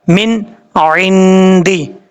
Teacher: نون ساکنے کے بعد عین آ جائے تو پھر کیا کریں گے؟ نون کو ظاہر کر کے پڑھا جائے گا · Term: اظہار حلقی